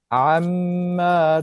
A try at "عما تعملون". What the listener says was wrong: You gotta stretch that meme. You see that meme is double meme here. Stay at the meme.